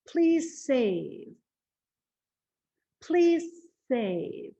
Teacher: You hear how I'm holding that S and it's hissing?